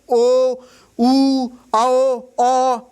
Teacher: इन स्वरों में क्या हो रहा है? हमारा होठ गोल गोल हो जा रहा है। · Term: वृत्ताकार स्वर